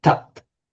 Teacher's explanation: the voice stops at the consonant without the final ah following.